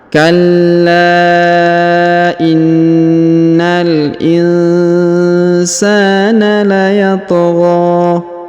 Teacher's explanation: huruf la ditahan dan ditekan karena terdapat tanda tasdid. Setelah ditahan dan ditekan kemudian dipanjangkan 5 harokat ya, karena di atasnya terdapat tanda alif kecil.